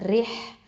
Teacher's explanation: Okay, இந்த இடத்துல வந்து ரா வந்து தற்கைக்கு லைட்டாக தான் உச்சரிக்கணும். ஹ சுக்கூன் அப்போது ஹம்ஸ் சிஃபத்தை கொடுக்கணும்.